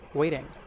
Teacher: You replace the T with D, that's it